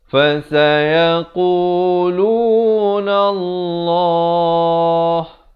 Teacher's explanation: Lafaz jalalah dipanjangkan sekurang-kurang 2 harakat kalau kita pilih untuk waqaf.